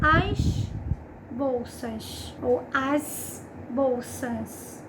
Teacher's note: se falando rápido, esse S do bolsas some. As bolsas, quando se fala muito rápido, é bastante comum essa ausência. · Você vai observar que é plural pelo contexto ou pelo artigo que tem, aparece a pronúncia no artigo do S, mas não aparece no substantivo. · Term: apagamento da letra S